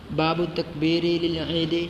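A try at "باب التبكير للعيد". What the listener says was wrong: جی تبکیر پڑھے تکبیر نہیں. یہاں بھی تبکیر ہے. ہے ہی تبکیر. تکبیر تو ہے ہی نہیں. صبح صبح جانا عید کی طرف. بکر یبکر تبکیر.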